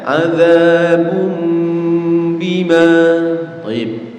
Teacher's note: nun sukun atau tanwinnya ya berganti menjadi mim seperti suaranya mim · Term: iqlab